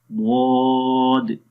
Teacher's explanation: زبان کی جو جڑ ہے وہ اوپر تالو کی طرف اٹھتی ہے یعنی کہ آواز تالو کی طرف اٹھے گی. تو یہاں پر زبان دیکھیں اٹھ رہی ہے, آواز یعنی کہ اوپر جا رہی ہے. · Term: صفت استعلا